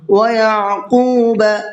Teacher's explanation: قاف کو پر بھی کرنا ہے اور ساتھ ساتھ کھینچ کر کے بھی پڑھنا ہے